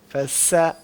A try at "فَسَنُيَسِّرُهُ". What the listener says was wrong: زبان پھر بھی باہر آ رہی ہے. زبان کو اندر لے جائیں.